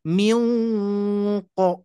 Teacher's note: Nun mati bertemu Q itu ikhfa Hakiki harus diikhfakan harus didengungkan